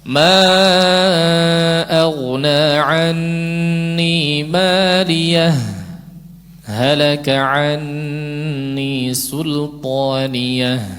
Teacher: Tidak ambil nafas. Berhenti seperti wakaf tapi tidak ambil nafas. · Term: saktah